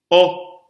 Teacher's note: It's an open back vowel.